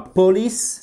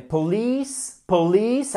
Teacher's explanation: accent tonique sur la 2e syllabe